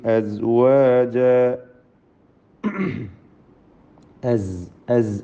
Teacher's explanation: സുമ്മ ജഅലകും അസ്വാജ, അസ്, അസ് എന്ന് പറയുമ്പോൾ സായിൻ്റെ ഉച്ചാരണം, അതിൽ അത് സീനോ മറ്റ് രൂപത്തിലൊന്നും ആയി പോകരുത്. അസ്വാജ, അലിഫിൽ 2 ഹറക്കത്തിൻ്റെ അളവ് മാത്രമേ കൊടുക്കാവൂ, ദീർഘം. അസ്വാജ എന്ന് കൂടുതൽ നീട്ടരുത്.